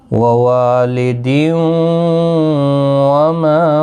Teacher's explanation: وَوَالِدٍ یہاں پر ادغام یرملون ہوگا، غنہ کے ساتھ پڑھیں گے